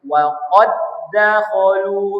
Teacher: Jadi dal pertamanya tak perlu dibaca. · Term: idgham mutamasilain shaghir